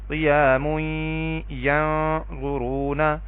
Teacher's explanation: کیونکہ یہاں پہ اظہار ہو رہا ہے، آگے حرف حلقی ہے، اور یہاں پہ دیکھیں تنوین کے بعد یا ہے جو کہ حروف یرملون میں سے ہے تو یہاں پہ میں نے ادغام بالغنہ کیا ہے